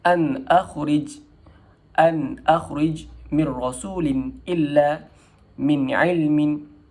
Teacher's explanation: Apabila dia bertemu dengan huruf-huruf izhar seperti hamzah, ha berkaki, kha, ain, ha dan ghain. Cara bacaannya adalah disebut dengan jelas tanpa dengun dan hujung lidah ditekan ke gusi hadapan sebelah atas. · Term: izhar halki